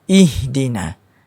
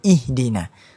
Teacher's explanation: ha bulat ini dimari pada pangkal kerongkong paling bawah